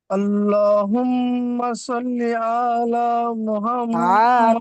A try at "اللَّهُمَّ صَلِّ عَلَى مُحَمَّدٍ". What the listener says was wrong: টান নেই। আল্লাহুম্মা সাল্লি আলা মুহাম্মাদ। টান নেই, সাল্লি আলা মুহাম্মাদ। صل على محمد. টান দিয়েন না, আলা আলা মুহাম্মদ।